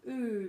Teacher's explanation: quite a round sound quite forward and quite round